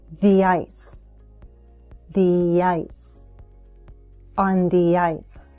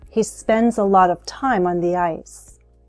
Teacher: I'm linking with a Y sound from the to ice